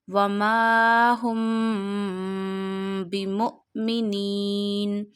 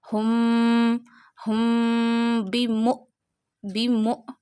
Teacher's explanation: because when after meme sakina ba is a next letter, so you take meme sound into the nose and stretch up to one alif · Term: meme sakin gunna ikhfai shafawi